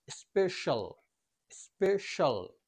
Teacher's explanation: যেহেতু সি এর পরে দুটি ভাওয়েল লেটার রয়েছে তাই এখানে সি এর উচ্চারণ হবে তালব্য স্বয়ের মতো